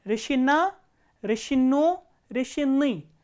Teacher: the stress has changed to the last syllable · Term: last syllable is stressed